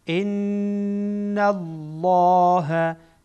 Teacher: اینجا نون مشدده غنه میشه، لام هم اینجا پر میشه.